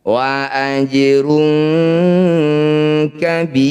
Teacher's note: bi panjangkan 6 harokat, huruf terakhir sukunkan. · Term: mad arid disukun